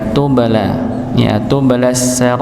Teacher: Maka dipantulkan dengan pantulan yang yang ringan karena sebagai qalqalah sugra, qalqalah yang kecil. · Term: qalqalah sughra